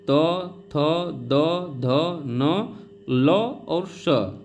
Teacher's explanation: दंत का मतलब दांत होता है, जीभ दांतों से स्पर्श होगी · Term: दंत्य